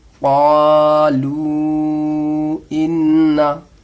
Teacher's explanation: हुरूफ मद्दा के बाद हमज़ा दूसरे कलीमे में आ रहा है तो मद्दे मुनफसिल होगा और इसको भी 3 अलिफ के बराबर खींचकर पढ़ते हैं। क़ालू इन्ना, हा खड़ा मद ज़बर हा, हमज़ा पेश उ, हा उ, लाम खड़ा, लाम अलिफ मद ज़बर ला, हा उला, इस वाव को नहीं पढ़ना है, इस हमज़ा पे जो पेश है इसको पढ़ना है।